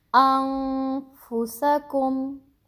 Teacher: اب آپ نے نون کی آواز کو پراپر چھپا دیا ہے ناک میں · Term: اخفاء حقیقی